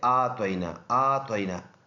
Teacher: بعض لوگ اس کو انا آتوینا پڑھتے، آتوینا آتوینا، یہ عین کی آواز کو بالکل ختم کر دیتے ہیں، جو یکسر غلط ہے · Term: لحنی جلی